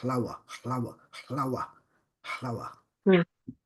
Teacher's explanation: in the Palestinian pronunciation the first vowel is dropped